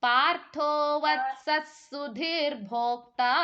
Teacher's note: ಇದೆ ಅಲ್ವಾ ಅದರ ನಂತರ ಸ ಅಕ್ಷರ ಇದೆ ವತ್ಸ ಸುಧೀರ್ಭೋಕ್ತ ಅಂತ ಹೇಳಬೇಕು ವತ್ಸ ಅಂದಿದ ತಕ್ಷಣ ವಿಸರ್ಗ ಕೂಡ ಸೇರ್ಕೋಬೇಕು ಅಂದ್ರೆ ಸ ಗೆ ಒತ್ತಕ್ಷರ ಇರೋ ರೀತಿನಲ್ಲಿ ಉಚ್ಚಾರಣೆ ಮಾಡಬೇಕು